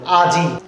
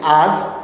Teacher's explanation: এখন দেখেন পরবর্তীতে রূপান্তরিত শব্দে আমরা যখন বলছি আজ, তখন কিন্তু এই ইকারটা বাদ পড়ে গেছে। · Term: অন্তঃস্বরলোপ